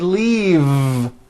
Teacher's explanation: is that correct no it's not leaf with an unvoiced F I should have said leave with a voiced V sound